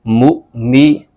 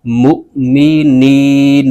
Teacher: حمزہ ساکنہ کو جھٹکا دے کر پڑھیں گے